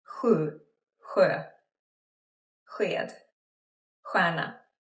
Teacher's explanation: These spellings often make the same sound, like a soft, but like further back in the mouth, more like breathy. · Not like shh, but more like shh. Like imagine you saying shh, shh, but then more like airflow at the back of your throat. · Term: chaos sounds